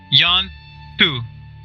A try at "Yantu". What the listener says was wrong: No, just one word. Yantu.